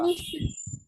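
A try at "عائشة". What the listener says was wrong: নুন না কিন্তু। আইনের পরে আলিফ, এরপরে কিন্তু হামজা যে ই। আইশা তু,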